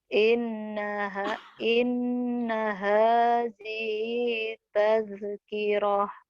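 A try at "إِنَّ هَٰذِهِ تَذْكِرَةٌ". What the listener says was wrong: Inna hadhihi tazkirah. Zalnya tuh ya. Masih ke bau dal. Tazkirah. nanti kan ada rekamannya oh ini zalnya.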